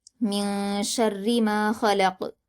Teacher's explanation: را پر زیر کی حرکت ہے اور تشدید ہے تو سختی کے ساتھ باریک پڑھیں گے۔ میم پر الف مدہ ہے، 2 حرکات کھینچ کر پڑھیں گے۔